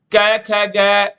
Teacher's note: ਇਹ ਸਾਰੀਆਂ ਧੁਨੀਆਂ ਤੁਹਾਨੂੰ ਯਾਦ ਹੋਊਗਾ ਬੇਟੇ, ਇਹ ਕੋਮਲ ਤਾਲਵੀ ਧੁਨੀਆਂ ਨੇ